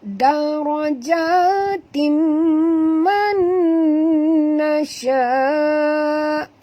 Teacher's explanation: Bila baris dua di bawah bertemu dengan mim, kita kena dengung dia. Hukum di sini wajib dengung, iaitu idgham ma'al gunnah.